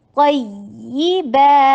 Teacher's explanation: نبر میں ذرا سی آواز کو باؤنس کیا جاتا ہے تاکہ یہ نہ لگے کہ یا ایک یا ہے بلکہ 2 یا کو اچھی طریقے سے پروناؤنس کیا جائے یہ